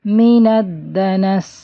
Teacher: سین جب ساکن ہوتا ہے تو اس میں صفیر کی آواز یعنی سیٹی والی وسل ساؤنڈ اور زیادہ آتی ہے، اور اس میں رننگ ساؤنڈ بھی ہوتی ہے تو تھوڑی سی اس کی آواز چلے گی، من الدنس، اس طرح سے۔